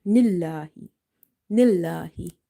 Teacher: lam will be light because of the kasra before it